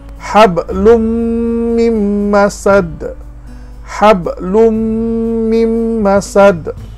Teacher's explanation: punya bunyi sama dengan yang macam kita belajar huruf yang bertasydid Nun kita buang terus saja masuk kepada huruf mim di depannya · lum kita terus masuk kepada huruf mim, tidak sebut lun lagi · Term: idgham